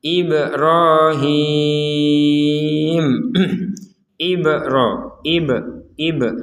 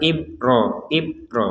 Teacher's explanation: Huruf ba sukun ini harus kita pantulkan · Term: dipantulkan